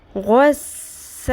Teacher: اب سین آ گیا، باریک رکھنا ہے، سین زبر الف سا، غین کو پر رکھنا ہے لیکن سین کو باریک